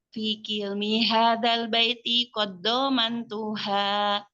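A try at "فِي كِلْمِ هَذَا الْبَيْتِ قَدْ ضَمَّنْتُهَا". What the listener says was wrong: Itu qad dhamman itu dal sukun bertemu dengan huruf dhad. Dia bukan dibaca idgham dia dibaca apa? Dibaca izhar kalau dibacaan kita itu. Fi kilmi hadzal baiti qad dhamman. Fi kilmi hadzal baiti qad dhammantuha. Qad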